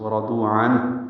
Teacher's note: شفوی، ہونٹوں میں اظہار، ورضوا را پر ضاد پر واو مدہ، عنہ اظہار اور ہا ساکن پہ ہمس ، ورضوا عنہ یہ آخر میں ہا کی آواز نکالنی ہے،